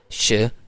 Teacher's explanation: स और ज जो है ये एल्वियोलर फ्रिकेटिव्स हैं। और श जो है श, ये हमारे पास पैलेटल फ्रिकेटिव है। पैलेटल फ्रिकेटिव या एल्वियोलर फ्रिकेटिव हम इसलिए कह रहे हैं कि ये जहाँ जहाँ से प्रोनाउंस हो रहे हैं, ठीक है, ये पैलेटल से प्रोनाउंस हो रहा है, ये एल्वियोलर से, ठीक है।